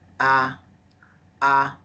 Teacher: Remember, the first tone is high pitch. It's very high. Ah, ah, on the top.